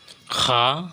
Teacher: গলার প্রথম অংশ হইতে উচ্চারিত হয়